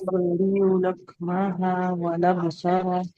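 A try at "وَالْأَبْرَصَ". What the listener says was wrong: हाँ, वल अबरसा रा पहले, ठीक है, और हाँ को लंबा ना कीजिएगा। व उबरिउ लकमह वल अबरसा।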